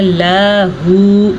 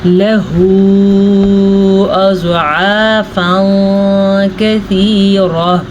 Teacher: اس کو تقریباً 2.5 حرکات عربیہ تک لمبا کرتے ہیں اور اس کے علاوہ اگر آپ سمجھنا چاہیں تو اس کو 2 سے 2.5 سیکنڈ تک لمبا کر کے پڑھتے ہیں، ٹھیک ہے. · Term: چھوٹی مد